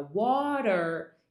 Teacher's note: É uma vogal única, é uma coisa só. E é como se o R estivesse interagindo com a vogal tanto que ele se torna parte dela. · O inglês americano, ele tem esse R depois do som de A, que é o som do schwa. Então, quando o R está numa posição depois de uma vogal e o som dessa vogal antes desse R é um som de A gente vai considerar o R como parte da vogal. É uma vogal única, é uma coisa só. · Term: R vocálico